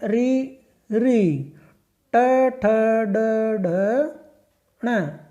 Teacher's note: ये सभी वर्ण मूर्धा से बोले जाते हैं, इसलिए इन्हें मूर्धन्य वर्ण भी कहते हैं।